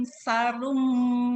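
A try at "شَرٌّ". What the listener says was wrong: Sarum ada tasdid, hati-hati, jangan sarum, syarrum.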